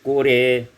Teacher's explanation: Pada ayat yang ke-14, qura, imalatu fathir ra, imalakan fathah ra wal alif waqfan, ketika waqaf menjadi qure